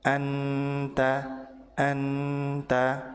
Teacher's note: Ujung lidah menempel ke langit-langit depan atau di makhraj huruf nun sehingga nun terbaca jelas atau idhar.